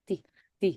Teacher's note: So, it's like you can't really tell if it's a D or a T. And it's supposed to be like that.